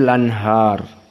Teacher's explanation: al-anhar dibaca an-naql. Jadi lanhar.